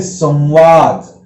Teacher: ये जो 4-5 अक्षर है इनके पहले अगर बिंदी आएगी तो वह बिंदी देखिए अनुनासिक के साथ साथ, नासिका के उच्चारण के साथ साथ वह बिंदी व के समान उच्चारण करती है, दंत तालव्य। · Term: दंत तालव्य व